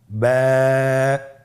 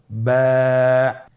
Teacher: বা হরফে টান হবে, এক আলিফ টান। · এর মাখরাজ হলো আপনার 2 ঠোঁটের বিজা অংশ থেকে আপনি উচ্চারণ করবেন।